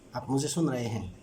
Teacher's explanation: निम्न स्वर नीचे की तरफ आते हैं बोलते हुए। हम वाक्य ऊंची आवाज में पहला शब्द शुरू किया और बोलते बोलते धीमी आवाज हो गई। आप मुझे सुन रहे हैं, इसमें ये एक अंतर है, ये निम्न हो जाना है।